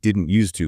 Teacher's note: The D and T sounds kind of merge together.